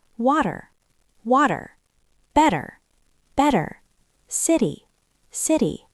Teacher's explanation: My tongue just taps the roof of my mouth very quickly and moves on · This is when the letter T is between two vowel sounds. In American English, we don't say a sharp T like in top. We make a very quick, soft D sound. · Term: flap T